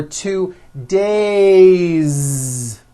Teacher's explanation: It's not days, unvoiced. It's days with a voiced Z ending.